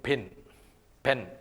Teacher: the Two Lips come together and they make a firm contact and they block the Airstream completely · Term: plosive